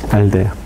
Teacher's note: cuando se dice aldea, es ápico dental